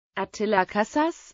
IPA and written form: ˈɒt:ilɒ ˈkɒsa:ʃ (Attila Kaszás)